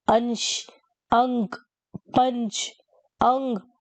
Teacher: इसके कंपैरिजन में अनुस्वार देखते क्या होता है, परंतु अनुस्वार का उच्चारण करते समय नाक से अधिक और मुंह से कम सांस निकलती है।